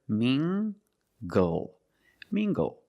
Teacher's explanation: using the nasal sound and the hard g